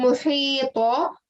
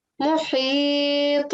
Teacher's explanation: And when we're giving a jerking sound at the end, rather than saying muhita, I'm saying muhit, and it's like a slight jerking sound there.